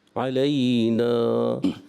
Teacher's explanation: اب آپ علینا پہ جب وقف کریں گے تو کیا کریں گے؟ ایک الف کھینچیں گے, اس کو زیادہ نہیں, علینا زیادہ نہیں, ایک الف, علینا ایک الف آپ نے اس کی ادائیگی. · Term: مد اصلی